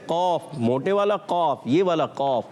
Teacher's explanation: قاف تو ادا ہو گیا زبان کی جڑ اور تالو کے نرم حصے سے